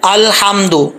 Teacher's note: لام کے اوپر جزم ہے، اس کو کلکلا کر کے نہیں پڑھیں گے